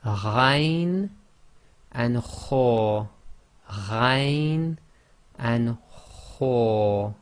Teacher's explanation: your tongue doesn't actually touch the back of the top of your mouth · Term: top of the throat